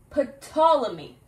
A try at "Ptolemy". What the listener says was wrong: The P is silent.